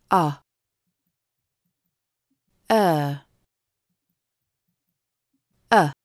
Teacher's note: кончик языка находится в середине рта а тело языка будет подниматься снизу к средней позиции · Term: гласные среднего ряда